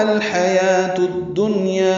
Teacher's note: تا کو الدنیا کی دال سے ملا دیں گے، ادغام شمسی ہوگا، یہ اسی لیے الف لام نہیں پڑھا جا رہا.